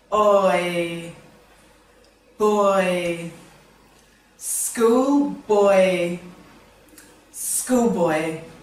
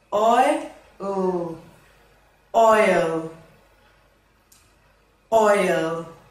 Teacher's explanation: Oi is a long vowel sound and starts with O and moves to E. It's pronounced oi. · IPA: /ɔɪ/